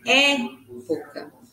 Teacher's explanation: Na palavra época, é um E aberto, né?